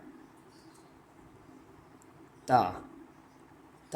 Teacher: تا زبان کی نوک جب اوپر کے اگلے 2 دانتوں کی جڑ کی طرف والے آدھے حصے سے لگتا ہے تو کیا تا ادا ہوتا ہے۔